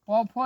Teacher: पौफो ये ओष्ठ से बोला जाता है